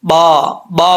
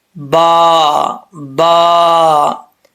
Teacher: दोनों होठों का तरी वाला हिस्सा मिलेगा तो बा पढ़ा जाएगा